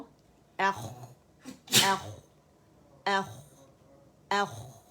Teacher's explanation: آواز کا فلو دیکھ رہے ہیں, آواز فلو کرتی ہے, اس میں رخاوہ ہے